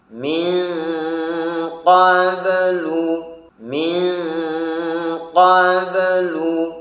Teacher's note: Yang betul adalah tahan dengungan ikhfa 2 harokat.